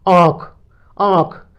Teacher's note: यदि सिर्फ बिंदी से अर्थात नाक से ही हम अपनी नाक पर बोलकर आवाज देखते हैं, जैसे आंख, आंख, अर्थात कुछ हवा, थोड़ी सी हवा हमारी नासिका से, नाक से आती है और कुछ हवा हमारे मुंह से आती है। अतः आंख में जो शब्द आएगा वह अनुनासिक होगा, अर्थात चंद्र बिंदु लगेगा।